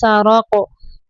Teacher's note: रा को ऊपर पढ़ना है, क़ाफ को भी ऊपर पढ़ेंगे